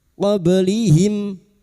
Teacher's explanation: huruf ba yang mati asli di kalimat qalqalah Sugro